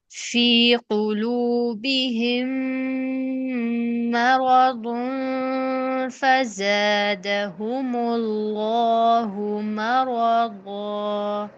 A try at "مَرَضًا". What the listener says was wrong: را اتنا لمبا کیوں کیا ہے؟